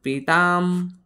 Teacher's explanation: आणि त्यावर अनुस्वार कसा उच्चारण पिताम म्हणजे अनुस्वाराचा उच्चार अर्धा म अर्धा म